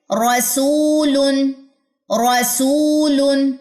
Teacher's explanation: र को अदा करते हुए जुबान की जो पुश्त है वो भी साथ में इनवॉल्व होगी तरफ लिसान में भी